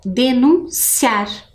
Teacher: denunciar, que também a sílaba mais forte é o ciar